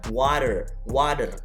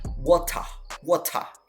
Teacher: Kalau Amerika, T itu jadi D. Terutama yang rangkap gini ya.